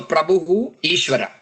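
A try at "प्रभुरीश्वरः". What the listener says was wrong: we shouldn't be studying, like, we shouldn't be chanting as Prabhuhu Ishwaraha. We should be doing it as Prabhuri Ishwaraha.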